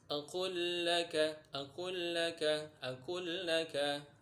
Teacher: Contoh idgham mutamatsilin. Lam bertemu dengan lam, lamnya mati atau sukun, lam yang kedua hidup, maka lam yang pertama ini dimasukkan ke huruf lam yang kedua.